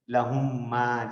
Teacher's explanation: second میم مشدد ہو جائے گی، first والی ساکن رہے گی، لیکن پروناؤنسیشن میں ایک میم کنسیڈر کرتے ہوئے ہم پڑھیں گے · گویا کہ ہم میم ساکن کو جو ہے نا ڈائریکٹ میم زبر کر دیتے ہیں